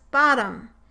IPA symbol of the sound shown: ə